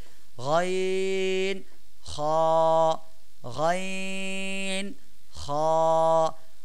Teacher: হ্যাঁ, আপনারা আমার সাথে বলেন, 3 নম্বর মাখরাজ হলকের শেষ হইতে, অর্থাৎ কণ্ঠনালীর শেষ, একেবারেই বুকের সাথে, মানে বুকের যে হাড় ওর সাথে যে মিলে আছে কণ্ঠনালী, ওইখান থেকে হলকের শেষ হইতে গইন, খ, তার মানে গইন এবং খ, এই 2টি হরফ আমরা উচ্চারণ করব একেবারে হলকের শেষ হতে